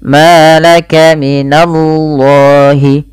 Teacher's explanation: lafal Allah ditebalkan huruf lamnya, di sini laf ya, lam lafzul jalalah, yaitu lam tafkhim, dibaca dengan tebal, tapi hati-hati jangan menebalkan na-nya.